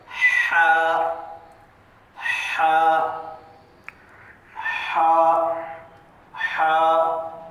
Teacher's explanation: حلق کے درمیانی حصے سے ہا کی آواز کو پڑھنا چاہیے، ہا اندر سے آئے گی۔ · हमारा जो हलक है हलक के दरमियानी हिस्से से ये आवाज आएगी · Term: हा की आवाज